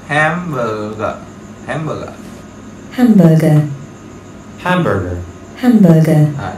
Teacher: Trọng âm đầu tiên chúng ta là hám, hám rồi, hám rồi, hám rồi.